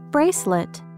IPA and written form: ˈbreɪslət (Bracelet)